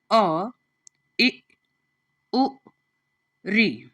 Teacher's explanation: तो प्यारे बच्चों, यह जो अ, इ उ ऋ जो रेखांकित किए हुए हैं, जिनके नीचे रेखा लगी हुई है, यह हमारे ह्रस्व स्वर हैं। क्योंकि इनके बोलने में एक मात्रा का समय लगता है